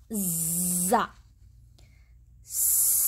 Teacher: زبان کی نوک دونوں درمیانی دانتوں کو لگا کر سختی کے ساتھ زا ادا ہوگا